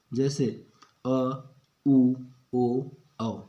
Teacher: जिन स्वरों के उच्चारण में जीभ का पश्च भाग ऊपर उठता है पश्च स्वर कहलाते हैं